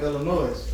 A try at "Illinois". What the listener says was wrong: The S is silent. the S is silent.